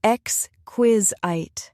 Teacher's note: It has three syllables, x, quiz, it. The stress is on the second syllable.